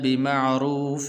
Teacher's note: یہاں پر غنہ نہیں کریں گے کیونکہ آگے حمزہ حروف حلقی میں سے ہے